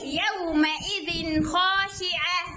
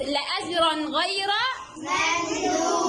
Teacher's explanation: يبقى التنوين هنا بأظهره لأنه أتى بعده حرف من حروف الإظهار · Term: بنظهر التنوين